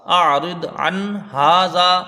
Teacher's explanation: عین کو نون سے ملائیں گے، نون ساکن کے بعد حروف حلقی کا ہا ہے، تو یہاں اظہار حلقی ہوگا، یعنی نون کو ظاہر کر کے بغیر غنہ کے جلدی پڑھا جائے گا. ہا میں الف مدہ ہے، ایک الف کی مقدار، اس کو کھینچ کے پڑھیں گے